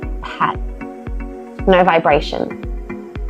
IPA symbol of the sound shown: p